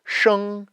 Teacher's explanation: I want to curl my tongue back and say it sh as opposed to how we would normally say an sh in English